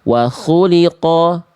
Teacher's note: Kho memang gak boleh banyak ngorok. Ngorok banget itu enggak, tapi tetap harus bunyi jelas koknya.